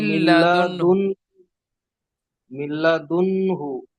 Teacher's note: লামের ওপরে তাসদিদ এসেছে, তাসদিদ ওয়ালা অক্ষরকে দুবার পড়তে হয়, ডান দিকের অক্ষরের সাথে একবার, একাকিক একবার।